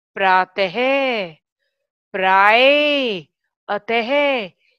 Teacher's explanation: विसर्ग में किसी भी शब्द के आगे 2 डॉट लगते हैं, उसे विसर्ग बोलते हैं। विसर्ग का उच्चारण ह की तरह होता है, एंड में ह की ध्वनि आती है।